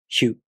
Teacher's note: To pronounce Hyu, the tongue moves from the [ç] consonant to the [ɯ] vowel.